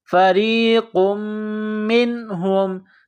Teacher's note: نون ساکن کے بعد ہا ہے، حروف حلقی ہے تو یہاں غنہ نہیں کریں گے